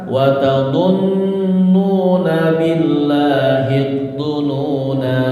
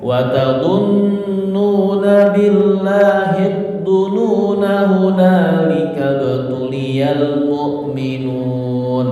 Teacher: Jika dibaca waqaf, nanya dibaca panjang. Jika dibaca wasal, nanya dibaca pendek.